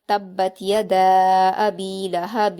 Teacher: वाव से मिलाते हुए एक अलिफ के बराबर गुना किया जाएगा यानी नाक में आवाज को छिपाया जाएगा